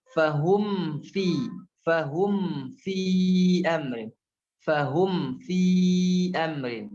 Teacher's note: Mim sukunnya dibaca jelas. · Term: izhar syafawi